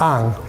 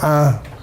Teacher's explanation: you get sometimes the full syllable ang. Sometimes it's reduced to just the nasalized vowel an.